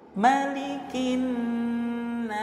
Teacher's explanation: ketika waqaf di kalimah nas, maka ini hukumnya adalah mad arid lis sukun, kita menerapkan panjang yang 6 harokat ya · Karena nunnya bertasydid maka di sini juga ada hukum gunnah musyaddadah ya, didengungkan selama 2 harokat. Dengungnya itu di pangkal hidung ya, selama 2 harokat.